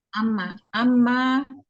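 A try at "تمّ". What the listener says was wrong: Pakai ta.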